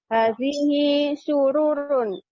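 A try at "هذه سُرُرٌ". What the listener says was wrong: nah pendek ru-nya, sururun gitu Bu. Iya, bukan sururun tapi sururun gitu.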